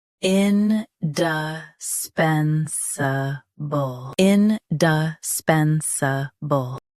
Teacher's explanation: Both US and UK have the same pronunciation of this word. Stress pen. Keep d and s soft.